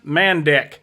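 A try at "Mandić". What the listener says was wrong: Which is pronounced CH. Mandich.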